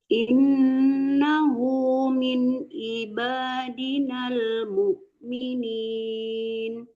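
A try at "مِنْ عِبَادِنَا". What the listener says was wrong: Min aiba ya Bu, jangan min iba itu bisa jadi amzah disamarkan ya, nggak terbawa ain. Kalau ain itu kan makharijul hurufnya di tengah-tengah tenggorokan. Aiba, jangan iba.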